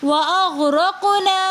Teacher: یہاں پر ہم غین کے اوپر قلقلہ نہیں کریں گے، بلکہ اپنی آواز کو کنٹرول کر کے پڑھیں گے وَأَغْرَقْنَا۔ را کے اوپر زبر ہونے کی وجہ سے را کو موٹا کریں گے۔ آگے قاف حروف قلقلہ میں سے ساکن حالت میں کلمے کے درمیان میں آ رہا ہے، تو قاف کو ہم پڑھیں گے وَأَغْرَقْنَا۔